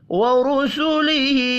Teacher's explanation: وَكُتُبِهِ وَرُسُلِهِ، اس میں را پیش کی وجہ سے پر پڑھا جائے گا اور ہا کو کھڑی زیر کی وجہ سے 1 الف کے برابر کھینچ کر پڑھیں گے